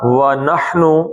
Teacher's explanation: ہا کو حلق سے نکالنا ہے